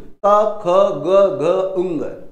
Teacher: जिनका उच्चारण कंठ से होता है उनको कंठे कहते हैं